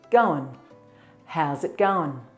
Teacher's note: And then the T sound in it changes to it, how's it. And then the ing sound in going is shortened